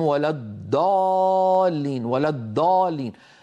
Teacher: منهم من يجعله دالا، الضاد يجعلوها دالا مفخمة